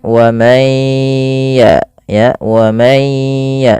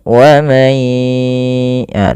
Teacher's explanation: sambil jangan lupa digunnahkan, masukkan ke rongga hidung sambil ditahan. Wa may ya, 2 harakat baru lepas. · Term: idgham bi gunnah